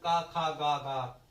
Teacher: ये कंठ ध्वनियां है, मतलब इनका उच्चारण कंठ से होता है